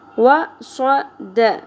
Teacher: وصد تینوں پر ایک ہی زبر ہے، سنگل حرکات ہیں، زیادہ نہیں کھینچنا